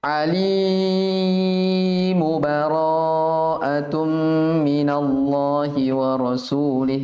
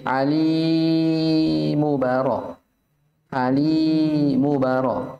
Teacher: Alimun di situ tidak sempurna dibaca. Ya, tidak sempurna dibaca. Dia setengah saja. Bahkan sepertiganya. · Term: sepertiga harokat